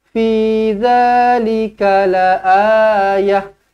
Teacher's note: Fi panjang, za panjang, 2 harakat.